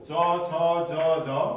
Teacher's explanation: दाँतको फेददेखि लिएर मुखको माथिल्लो भागमा रहेको खस्रो भाग र जिब्राको टुप्पाको भाग सक्रिय रहन्छ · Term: वर्ष्य अथवा दन्तमूल्य